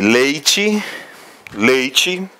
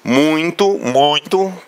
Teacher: você percebe o som vibrando aí na narina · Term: nasal